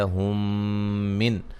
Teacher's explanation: یہاں میم ساکن کا ادغام ہے، غنہ کریں گے